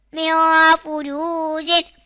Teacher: نون ساکن کے بعد فا آ رہا ہے تو گنہ ہوگا، یعنی اخفا کریں گے